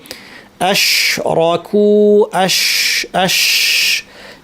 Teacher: শিনে বাতাসটা একটা সরু জায়গা দিয়ে আসার পরে হঠাৎ করে প্রেশারটা রিলিজ হয়, এবং ওই জিব্বার মাঝখান থেকে নিয়ে এই যে দাঁতটা আছে, এই দাঁত পর্যন্ত বাতাসটা সার্কুলেট করার একটা জায়গা পায়। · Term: তাফাশি